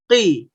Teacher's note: qaf kasroh, kha kasroh, ghain kasroh, maka suara yang dihasilkan tidak terlalu tebal, tidak terlalu tipis. Nama istilahnya adalah tafkhim nisbi.